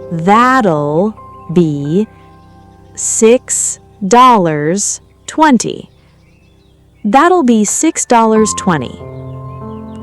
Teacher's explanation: Notice the soft t sound in that'll